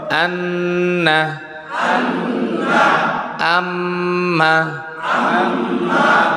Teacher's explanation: নাকের বাঁশি হইতে গুন্নাহ উচ্চারিত হয়